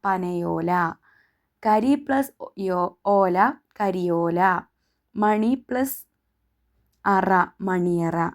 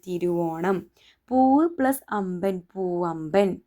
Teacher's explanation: പൂർവ്വപദാന്ത്യത്തിൽ താലവ്യ സ്വരമാണെങ്കിൽ യകാരവും ഓഷ്ട്യമാണെങ്കിൽ വകാരവും ആഗമിക്കുമെന്ന് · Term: ആഗമസന്ധി